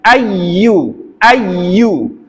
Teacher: ke al-khaisum kalau ini iyanya ditekan ada naber di situ Ayu benar-benar kuat dari tengah lidah dengan langit-langit